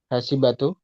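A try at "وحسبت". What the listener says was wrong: Nah, banyak sukun hasib tuh.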